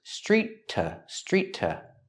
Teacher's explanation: There's only one T sound when you link the words.